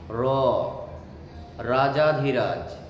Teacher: আর র, রটা হলো কম্পনজাত। যখন আমরা এই র এর দ্বারা শব্দগুলো উচ্চারণ করি, তখন আমাদের কণ্ঠটা কি হয়? কাঁপে। র, রাজাধিরাজ, এই জন্য বলে এটাকে কম্পনজাত ধ্বনি।